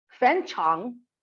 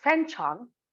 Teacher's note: fan is a high rising pitch and chang is a low dipping pitch falling and rising